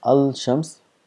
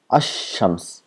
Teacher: So now if you add al to shams, so we don't pronounce as al shams, we make this lam silent and we give shadda to the word next to it, then becomes ashams, as though the lam does not exist. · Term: lam becomes silent